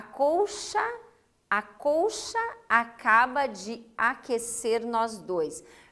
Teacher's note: Depois, você tem ali o fenômeno que se verifica na sílaba poética, nós temos um fenômeno que se chama elisão, quando eu uno sons vocálicos diferentes ali.